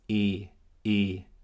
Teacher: Der Vokal hier in der betonten Silbe ist ein gespanntes E und es ist ein langer Vokal.